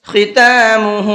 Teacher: ہا کے اوپر الٹا پیش ہے، اس کو تھوڑا سا کھینچ کر کے پڑھنا ہے 1 الف کے برابر